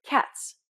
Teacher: it starts off as a t sound but ends with a s sound